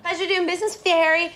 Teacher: In American English, it's often pronounced like hairy, with a longer, more open vowel sound.